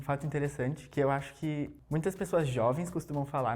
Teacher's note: there's a lot of air coming out of his like mouth when he speaks, so it's a bit calmer and softer